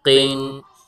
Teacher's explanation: ایک تو قاف کو موٹا کر کے پڑھنا ہے اور دوسرا قاف پر غنہ نہیں ہوگا